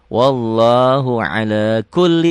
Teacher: lamnya double aja tanpa ditahan.